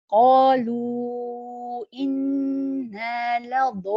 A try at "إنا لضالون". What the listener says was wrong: I feel you're still rounding a little bit the lips. So try to use the mirror to fix this mistake. not ضا لا ضا ولا الضا ولا الضا قالوا إنا لضالون.